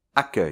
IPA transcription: akœj